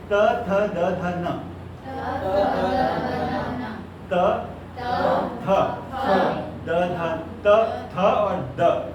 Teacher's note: जब हम बोलते हैं तो हमारा front of द tongue, blade of द tongue हमारे टीथ रिच को टच करता है, टीथ को नहीं टच करता, टीथ रिच को